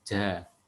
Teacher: kalau dialek Jawa itu kan pengucapan huruf J itu kan dengan nafas ya, dengan jelas. Ja itu kan lahjah Jawa.